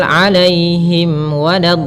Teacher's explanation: ada bacaan Lin pada lafal Ya Sukun yang sebelumnya fathah Kemudian pada lafal alaihim wad ada mim mati bertemu wau ini merupakan bacaan izhar yang di mana bacaannya yaitu suara mimnya harus jelas